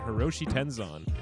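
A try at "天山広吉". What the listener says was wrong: Hiroyoshi Tenzan. Hiroyoshi. A Y in there. Yeah, there's a Y snuck in there.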